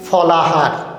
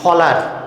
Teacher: হ একটা ব্যঞ্জনবর্ণ, সে তো হারায় গেছে, তার সাথে একটা স্বরবর্ণ ছিল, সেটাকে নিয়েই হারায় গেছে। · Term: অন্তর্হতি